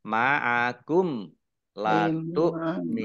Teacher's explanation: mim sukun bertemu dengan huruf lam bacaan izhar syafawi dibaca jelas